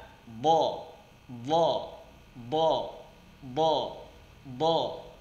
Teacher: keluar dari dua sisi lidah atau salah satunya bertemu dengan gigi geraham dimana gigi Graham itu gigi geraham yang paling kuat ya berada